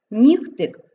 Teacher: нігтик г вимовляємо як х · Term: уподібнення